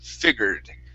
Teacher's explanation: we're going to have a short I at the beginning, and then it's going to be an er sound